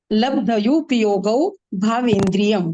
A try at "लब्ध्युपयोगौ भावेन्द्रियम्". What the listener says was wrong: लब्ध्यू, आधा ध है ना, आधा ध।